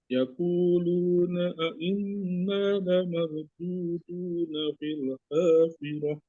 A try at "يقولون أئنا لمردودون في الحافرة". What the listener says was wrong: Nah, lihat huruf qaf. Bukan yaqulu. Huruf qaf. Inna 2 harokat ya. Inna lamarududu ya. Mardudu apa marududu? Roknya dibacanya gimana? Tebal apa tipis? Tebal ya. La marududu bukan mardudu. Mardudu. Ya, ini namanya mahraj ya. Di sini mahraj ada tafhim, ada tarkik ya, panjang, tebal, tipis ya.